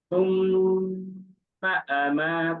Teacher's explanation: এখানে আমি যখন মিমটাকে ধরছি সে তখনই আমি দুই আলিফ টানটা দিচ্ছি [মিউজিক] তারপর আর কোন টান নাই ছাড়ার সময় কোন টান নাই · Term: মিমের ওয়াজিব গুন্না